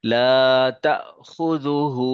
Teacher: تا میں یہ حمزہ ساکنہ ہے، اس کو جھٹکے کے ساتھ پڑھیں گے